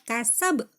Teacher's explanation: Cepet ya, mantulnya cepet, kasab. Tapi jelas. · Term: qalqalah kubro